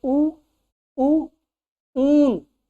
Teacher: देखिए जीभ जो हमारी है वो एकदम पीछे भाग जाती है